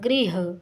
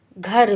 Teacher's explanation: तो इसमें इसका उदाहरण है गृह, गृह बदला घर में, महाप्राणीकरण हो गया ना। गा अल्प प्राण का शब्द है और ये बदल गया घा में, घा महाप्राण है